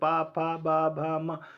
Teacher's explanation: देखो ऐसे बोल करके देखोगे तो आपको लगेगा कि पहले ओंठ दब रहा है